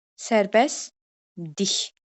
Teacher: L səsi D-yə keçəcək. T səsi ixtisar olunacaq. K səsi İ səsinə keçəcək.